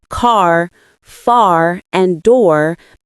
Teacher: Americans pronounce the R sound in all positions within a word. Words like car, far, and door maintain that strong R sound at the end. Unlike in British English where these Rs are often dropped, this single feature dramatically changes the character of American speech. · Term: rodic R